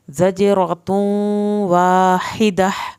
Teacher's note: ہا کو آپ نے حلق سے پڑھنا ہے، اس ہا کو واحدہ، اور اگلی ہا کو آپ نے اندر سے پڑھنا ہے۔